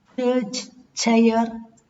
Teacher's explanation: Ch, church, chair, the initial sound of these words. Voiceless palato-alveolar effricate.